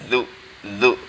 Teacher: di ujung lidah, kemudian ditempelkan pada gigi depan bagian bawah, agak dijepit seperti itu ya